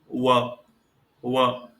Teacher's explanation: व वर्ण के उच्चारण के समय दंत और ओष्ठ दोनों सक्रिय हैं, तो इसका उच्चारण स्थान हो जाता है दंतोष्ठ।